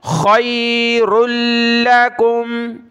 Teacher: را کو لام کے ساتھ ملایا